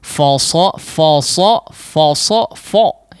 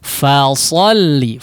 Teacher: fa difathahkan terlebih dahulu, betul-betul fathah dan tipis ya · fa-nya ditipiskan, ya. Jangan terburu atau terbawa ketebalan huruf shad ya.